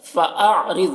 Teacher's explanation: حمزہ عین سے ملا کر پڑھیں گے اور عین کی آواز نکلے گی۔ را کو باریک پڑھنا ہے، ضاد کو پر پڑھنا ہے، حروف مستعلیہ میں سے ہے۔